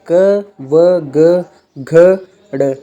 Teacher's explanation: इस वर्ग की सभी ध्वनियों का उच्चारण कंठ से होता है, यानी गले से हम इसको बोलते हैं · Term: कंठ ध्वनियाँ